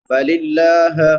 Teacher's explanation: لفظ اللہ باریک ہوگا کیونکہ لفظ اللہ سے پہلے زیر ہے